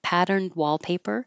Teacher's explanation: so if there was a consonant after it like patterned wallpaper you won't hear the D